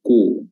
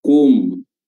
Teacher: kum ketika dia dhamma, bibir dia monyongkan, ku. Namun ketika dia mendarat di mim sukunnya, itu bibir enggak monyong lagi. Kum, bukan, tapi kum, kembali ke posisi semula.